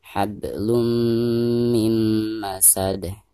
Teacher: Di sini mim ya, dan masuk idgham bigunah. Maka cara membaca tanwin yang ada di atas lam ini itu harus diidghamkan langsung ke huruf mim yang ada di depannya disertai dengan gunah atau dengan genung ya. Hablum mim masad.